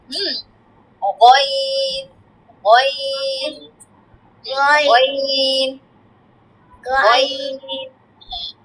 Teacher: গইনটা একদম গলার শেষ থেকে হবে।